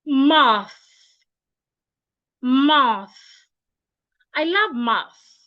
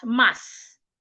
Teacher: Your tongue should be in between your teeth, like this. My tongue is not behind my teeth. It is in between my teeth.